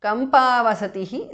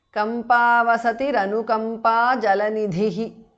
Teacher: Visarga changes to Repha.